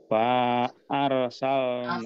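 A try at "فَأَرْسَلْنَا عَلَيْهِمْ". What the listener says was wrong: Hafalnya pendek Pak. Karena ini alifnya ada harokatnya ini ya. Jadi tidak jadi panjang. Alifnya ada harokatnya.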